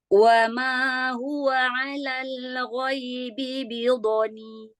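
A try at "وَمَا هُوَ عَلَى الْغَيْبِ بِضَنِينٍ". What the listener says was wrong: Bagus. Lam sukun jangan dipantulkan. Alal ghaibi.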